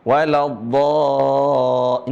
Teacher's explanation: Dibaca panjang karena ada lam sukun pada hakikatnya, yang lam sukun yang ada pada lam yang bertasydid.